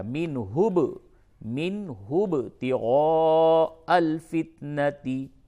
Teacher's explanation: نون ساکن کے بعد ہا ہے، اظہار ہوگا